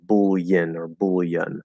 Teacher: you can do a half l which is very very common in american english